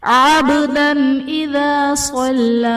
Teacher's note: عبدن میں با حرف قلقلہ ساکن ہے تو یہاں پر قلقلہ خوب ظاہر کریں گے